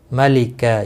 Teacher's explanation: ملکہ، یہاں پر وقف کی صورت میں وقف بالابدال ہوگا، دو زبر کو بدل کر ایک زبر کے ساتھ پڑھیں گے، الف مدہ بنے گا، ایک الف کے برابر کھینچ کر وقف کریں گے۔